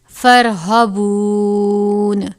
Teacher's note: را ساکن ہے، را کو پر پڑھا جائے گا